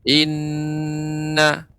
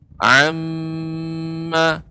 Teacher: gunnah yaitu huruf nun dan mim ketika bertasydid jelas